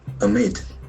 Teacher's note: Amid, the accent falls on the second syllable